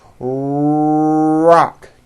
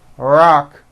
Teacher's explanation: notice how my lips are coming forward and my tongue moves back in my mouth and I push out the r sound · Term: American R